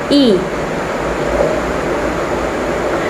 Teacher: Suara I dihasilkan dengan lidah yang sedikit dekat dengan langit-langit, rahang biasanya sedikit diangkat, dan bibir sedikit direnggangkan. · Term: Bunyi I